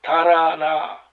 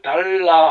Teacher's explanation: 가령 달아 하면은 설전음 혀 떨림 소리죠. 근데 달라 하면 설치음이 리을 소리가 설치음이 됩니다. 이게 그렇게 같은 글자 리을도 소리는 두 개로 난다.